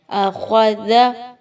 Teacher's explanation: زبان کی نوک کو آگے کی طرف نکالیے، دانتوں کے درمیان رکھیے